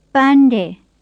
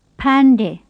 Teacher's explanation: the first of them begins with a plain p and the second with an aspirated p